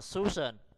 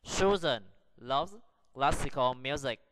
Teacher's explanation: Chữ S thứ nhất thì chúng ta lại phát âm nó là âm s, nhưng chữ S thứ hai thì chúng ta lại phát âm nó thành âm z.